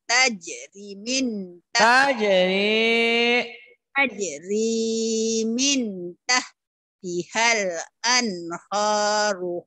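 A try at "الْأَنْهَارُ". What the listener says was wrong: Anhar, jangan anhur. Anhar. Ada huruf A, ada huruf O. Kalau A jangan dibaca O. Kalau O jangan dibaca A. Anhar. Jangan anhur.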